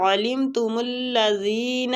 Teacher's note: عین حلق سے نکالیں گے